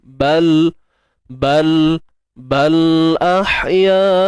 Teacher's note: huruf lam mati ni kita konsisten lah bunyi dia, jangan beranak, jangan tawallud. Bal pegang je.